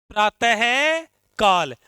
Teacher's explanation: और विसर्ग को बोलते हैं तो किसकी ध्वनि निकालते हैं? है की ध्वनि निकालते हैं।